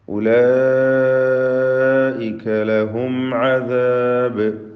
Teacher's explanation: ഉലൈക ലഹും, മദ് മുത്തസിൽ വാജിബ് ഉള്ളൊരു പദമാണിത്. അലിഫിനെ 4-5 ഹറക്കത്തിൻ്റെ അളവിൽ ദീർഘിപ്പിക്കൽ നിർബന്ധമാണ്